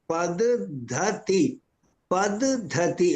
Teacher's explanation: దిత్వాక్షరంలో మొదటిది అల్ప ప్రాణం ఉండాలి రెండవది మహాప్రాణం ఉండవలే